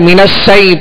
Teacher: یا ساکن سے پہلے زبر ہے، لہذا یا لین کو نرمی کے ساتھ ادا کریں گے